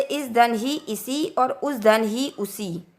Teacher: यहाँ धन ही यानी कि यही और वहाँ धन ही यानी कि वहीं। सा के बाद हा आने पर हा लुप्त हो जाता।